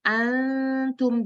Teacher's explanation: Jadi Ibu dari nun sukun ke taknya itu didengungkan atau dilebur gitu Bu. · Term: ikhfa